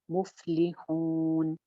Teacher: पा की आवाज चलती रही